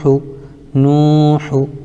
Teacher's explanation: پیش کو جلدی پڑھیں، تھوڑا بھی نہ کھینچیں۔ معروف پڑھیں، مجہول آواز سے بچیں، پیش کی آواز آگے کو جاتی ہے، جیسے حا پیش ہو، نوح۔